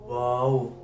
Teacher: इधर से नून अदा होता है आगे आ जाता है वाओ दोनों होठों को गोल करने से वाव अदा होता है